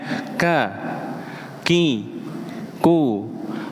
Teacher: kaf itu punya sifat yang namanya hams. Maka ada sedikit suara nafasnya kai, ku paling terdengar ketika disukunkan.